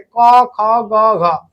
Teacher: जिसका जिस वर्ण का उच्चारण कंठ से होगा कंठ से उसे हम क्या कहेंगे? कंठ्य वर्ण कहेंगे।